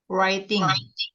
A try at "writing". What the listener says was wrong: Writing. Huruf mana yang nggak dibaca? W. Nah, W, W-nya kan nggak dibaca, bukan writing ya, writing, langsung ke R. Nah, itu namanya silent letter.